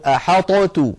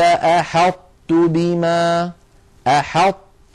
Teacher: يكون بإطباق اللسان، بأن يقرع اللسان مخرج الطاء من غير قلقلة، يقرع اللسان مخرج الطاء من غير قلقلة، ثم لما يفتح لا يفتح على طاء بل يفتح على تاء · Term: صفة الإطباق